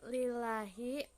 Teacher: lafaz Allah dalam kurung lam jalalah ada huruf yang berbaris kasroh cara membacanya lafaz Allah dibaca tipis panjangnya 2 harakat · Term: tarqi